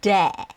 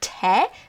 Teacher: So de is basically just the voiced version of te. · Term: voiced te